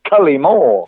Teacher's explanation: I stress the first syllable, Cullimore, and I like the way you sort of stress the first and the third syllables